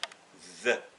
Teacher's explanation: Et le the, c'est une interdentale. The. Bout de langue entre les dents.